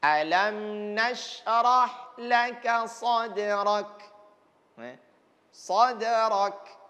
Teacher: setiap huruf kaf yang disukunkan ini kan harus ada desisan. Karena ini bagian sifatnya hamas.